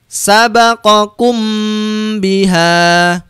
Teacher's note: ketemu huruf ba Hai jadi sesudah mim sukun ada huruf ba maka cara membacanya harus disuarakan samar-samar di bibir dan didengungkan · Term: Ikhfa Syafawi